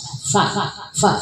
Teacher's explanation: Jadi perut bibir bawah dengan ujung gigi depan atas. Fa, fa. Jadi ada tiupan.